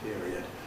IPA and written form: ˈpɪəriəd (period)